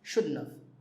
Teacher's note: Sometimes when we say it fast, we even say shouldn't have. We leave the T out.